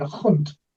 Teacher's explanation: it would be the German word Hund, with a very heavy guttural in Bavarian